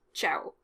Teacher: the O is stressed at the end of the word as opposed to the A in Italian